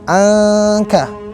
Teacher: Jadi bukan izhar yang jelas banget dan juga bukan idgham yang dicampur banget, tapi tengah-tengah. Seakan-akan kita masih mengucapkan huruf nun, namun lidah kita udah mendekati huruf selanjutnya, yang di sini adalah huruf kaf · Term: ikhfa